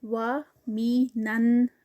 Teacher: آگے نون میں جب مرج ہوگا تو غنہ ہے یہاں پر. نا، اور پھر آگے وَمِنَن، غنہ بھی 2 کاؤنٹس کا، اور آگے نا جو ہے الف مد بن رہی ہے تو اس کا بھی 2 کاؤنٹس.